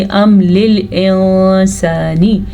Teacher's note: जब मीम पे जज़म आ जाएगी तो हमने गुन्ना नहीं करना, ठहरना नहीं है